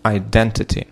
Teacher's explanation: So we have the second syllable, which is stressed.